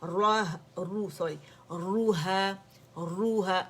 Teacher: را کو پکڑ کے اسے دمہ دینا ہے اور آپ نے لپس پورے سرکل کر لینے، گولائی ہونی چاہیے